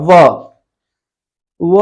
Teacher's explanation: व बोलने में दांत और ओठ दोनों की गति होती है। व बोलने में तो दांत और ओठ की जो गति होती है उसको कहते हैं हम लोग दंतोष्ठ वर्ण।